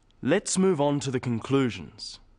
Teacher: stressing conclusions because it's the key word in the sentence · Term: sentence stress